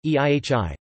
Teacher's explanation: an echo of the vowel after the breath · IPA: [ihi]